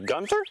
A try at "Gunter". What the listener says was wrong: It's Gunter, no H. Trust me, it's Gunter.